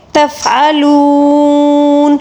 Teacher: واو مدہ کو ہم نے 3 الف کے برابر کھینچا، اس لیے کہ نون کے اوپر جو زبر ہے جب ہم اس کو ساکن دیں گے وقف کے دوران تو ہم واو مدہ کو 3 الف کے برابر کھینچ کر پڑھیں گے، ٹھیک ہے۔